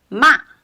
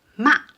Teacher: The pronunciation or the tone dropped very quickly. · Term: fourth tone